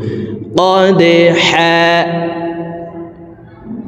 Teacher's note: দাল কলকলার হরফ নিচের দিকে ধাবিত করে ধাক্কা দিয়ে উচ্চারণ করব